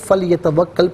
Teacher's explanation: فا پر جو زبر ہے اسے لام ساکن کے ساتھ ملائیں گے